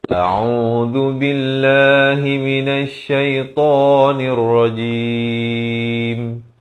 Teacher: Zal dihujang lidah baris dhammah. Lafz jalalah dibaca nipis dua harakat.